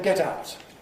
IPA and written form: ˈget ˈaʊt (get out)